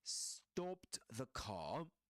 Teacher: in southern standard British English, the R is not usually pronounced at the end of a word like car